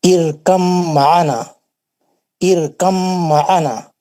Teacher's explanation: हुर्फ बा साकिन का हर्फ मीम मुशद्दद में इदगाम मुतजानिसैन हो गया